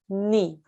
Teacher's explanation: this noun with the kasra is read ni for one count